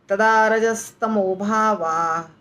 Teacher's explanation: फर्क है रजस ऐसे बोल देना है तदा रजस तमो भावा स पूरा नहीं बोलना है क्योंकि स आधा है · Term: आधा स